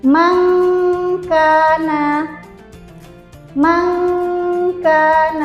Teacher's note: Nun sukun bertemu dengan huruf kaf. Nah, nanti kita samarkan nun sukunnya dan lidah kita siap untuk mengucapkan huruf kaf.